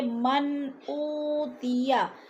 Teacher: من پہ اظہار ہو رہا ہے، لفظ کو ظاہر کر کے پڑھیں گے، غنہ نہیں کریں گے